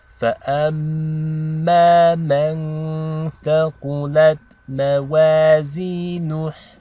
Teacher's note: we have an example of a meme with a shadda. that means you want to hold the ghunna for 2 counts.